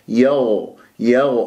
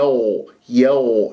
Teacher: لا تجعلها خاء تشممها هواء، لأنه الغين يجري فيها الصوت ولا يجري فيها النفس